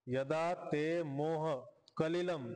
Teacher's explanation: इथं सगळे लघु अक्षर आहेत रस्व अक्षर आहे त्यामुळे श्लोक भंग झाला